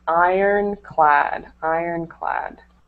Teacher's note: This word iron, we don't pronounce the R in it. So it's just ironclad, ironclad.